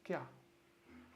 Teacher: I mean, when we combine this column and this column, so it appears like the I is missing, but everything is there. See how the I gets dropped and it just becomes one syllable of sound. · we drop the I sound when it's combined with ya, you, ro